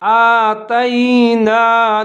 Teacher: حمزہ کے اوپر کھڑا زبر ہے، تھوڑا سا لمبا کر کے پڑھیں گے